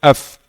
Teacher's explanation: ujung gigi di atas bertemu bibir bawah di dalamnya